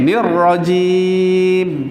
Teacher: Ra itu dia punya sifat dia takrir, ada getaran. Rajim dia ada getaran 2 kali.